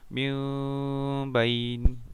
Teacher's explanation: Yang ke-14, iqlab. Membacanya dengan tanwin berubah menjadi mim dan berdengung serta ditahan selama 3 harakat.